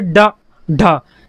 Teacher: जो आपकी जीभ है वह आपके तालू को टच हो और झटके से तुरंत हट जाए, जैसे डा, ढा। यह आपकी जीभ आपके तालू में लगेगी मुड़कर और झटके से तुरंत हट जाएगी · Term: उत्क्षिप्त व्यंजन